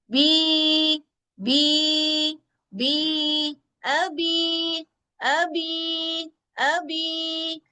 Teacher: मुझ पे साकिन की अलामत है और मुझसे पहले जेर आ रही है, तो मैं अपनी आवाज को 2 काउंट्स तक लंबा करूंगा